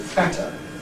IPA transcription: ˈfætə